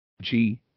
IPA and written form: ˈdʒiː (gee)